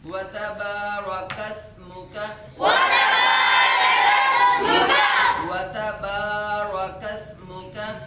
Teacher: کاف کو سین کے ساتھ ملا کے پڑھیں گے, کاف سین زبر کس, سین پہ قلقلہ نہیں کریں گے, سین کی آواز سیٹی کی طرح تیز نکلے گی